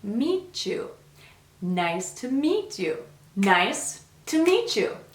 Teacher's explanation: we have a linking sound between the t and the u sound in you